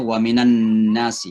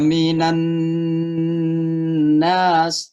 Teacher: Nun yang bertasydid itu dibaca gunnah namanya. Didengun-dengunkan itu.